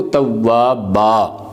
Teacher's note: اصل میں آپ دیکھیں گے توابن ہے، لیکن وقف کرتے ہیں تو ہم پڑھتے ہیں اس کو توابا